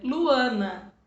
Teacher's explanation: esse an é o A com som nasal, que é saindo pelo nariz